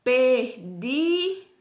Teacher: o di, ele sobressai os demais, então é a sílaba tônica